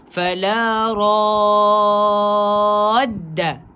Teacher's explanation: kena baca dengan mad 6 harakat, tak ada diskaun, no kompromi, sebab kat sini hukumnya mad lazim musaqqal kalimi, berat.